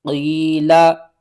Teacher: یا ساکن سے پہلے زیر ہے، حروف مدہ ہے، ایک الف کے برابر کھینچ کر پڑھیں گے